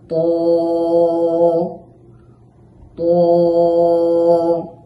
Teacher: এই ত হরফটি উচ্চারণের সময় জিহ্বার আগা সামনের উপরের দুই দাঁতের গোড়ার সাথে লাগাইয়া মোটা করে উচ্চারণ করতে হবে।